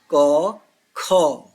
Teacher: अघोष गले के कंपन से गूंज नहीं होती। घोष का मतलब गूंज अ माने नहीं।